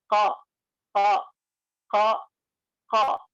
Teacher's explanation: Jadi pengucapan qaf itu pengucapannya dengan cara diangkat ke atas langit-langit lidah kita atau diangkat ke atas lah ya. Lidah paling belakang itu diangkat ke atas langit-langit.